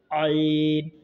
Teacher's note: आयन का मखरज हलक के दरमियाने हिस्से से आयन अदा होते हैं